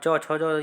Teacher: च, छ, ज ये तालव्य से इनका उच्चारण होता है।